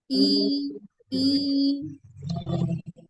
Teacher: posisi lidah yang belakang itu seperti terangkat gitu